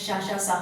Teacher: जो उच्चारण अवयव है उच्चारण स्थान का स्पर्श नहीं करता लेकिन वहां तक पहुंचकर जो दोनों के बीच में जो खाली स्थान रहता है वहां से श्वास घर्षण के साथ बाहर आती है। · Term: संघर्षी व्यंजन